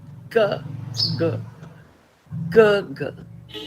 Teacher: When you say get also, g, you speak of the back of the tongue touching the soft palate. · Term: velar